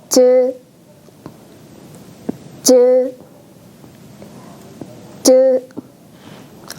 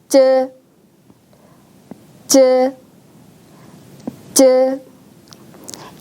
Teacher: 지금 공부할 즈는 잇몸보다 더 뒤쪽에 넓고 딱딱한 입천장에서 소리가 납니다. 자, 이번에는 여러분의 혀를 이 입천장에 가져다 대는데요.